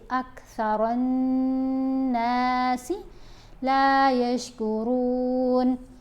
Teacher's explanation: تو یہاں دیکھیں نون کے اوپر تشدید ہے، یہاں بھی ہے، یہاں بھی، تو ان ساری جگہوں پر ہم نے غنہ کرنا ہے، یعنی ایک الف کے برابر ٹھہر کر پڑھنا ہے اور آواز ناک میں پڑھنی ہے